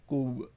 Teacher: اب یہاں پہ با قلقلہ ہے تو اس کو ہلانا ہے